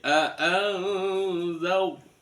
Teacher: sebelumnya ada huruf berharokat fathah, maka roknya dibaca tebal, tafkhim